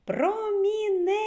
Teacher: куди падає наголос так на третій склад